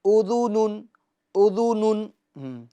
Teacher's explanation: होंठों को गोल करना है पेश को अदा करते वक्त। दाल पेश दु, उदु, ना, नून दो पेश नून, उदुनुन, उदुनुन।